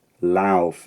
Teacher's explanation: the second element of this diphthong stayed rounded, that is, pronounced with rounded lips, for a lot longer.